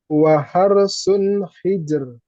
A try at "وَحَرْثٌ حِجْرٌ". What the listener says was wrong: yang ro pertama tebal. Waharosun hijr. وحرث حجر. Jangan terjeda. Waharsun. Nah, bukan. Waharsun hijar.